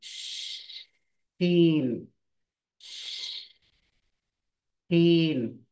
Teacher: जबान नीचे ही रहेगी, लेकिन बीच का हिस्सा ऊपर सख्त तालू को लगेगा।